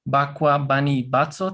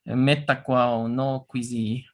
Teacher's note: Por ejemplo, esos tres, bakwa, bani y batso, tienen el acento en la primera sílaba